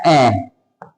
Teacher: अ का जो उच्चारण होगा वो हमारे जीभ्या के मध्य भाग से होगा। इसलिए इसको मध्य स्वर बोलते हैं।